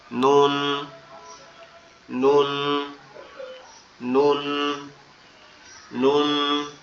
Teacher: আর এই নুনটা উচ্চারণ হবে আমাদের জিহ্বার আগা। উপরে তালুর সঙ্গে লাগবে নরমাল ভাবে।